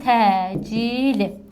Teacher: Burda bizim vurğumuz hardadır? Vurğu sondadır. Uzanma hardadır? Uzanma ikinci hecadadır. Baxın sait uzanıb.